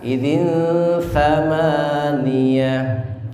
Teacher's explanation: idzin ketemu dengan tha, bukan sin tapi tha